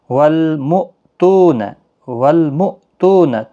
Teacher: تو واو مدہ ہے، ایک الف کی مقدار کے برابر کھینچ کر پڑھیں، اور حمزہ ساکن جھٹکے کے ساتھ ادا کیا جائے گا۔